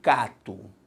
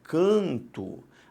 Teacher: na verdade o som é diferente por uma nasalização e não pela entrada de um novo fonema